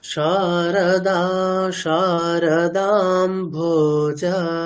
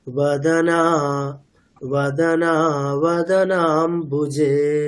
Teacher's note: যেগুলো দীর্ঘ বর্ণ আমি সেগুলোকে টানছি, আর যেগুলো হ্রস্ব বর্ণ সেগুলোর ক্ষেত্রে আমি জাস্ট টাচ করছি। অর্থাৎ রটা বলেই আমি ইমিডিয়েট, মানে যেখানে হ্রস্ব আসছে সেটাকে বলে আমি ইমিডিয়েট পরের অক্ষরে চলে যাচ্ছি।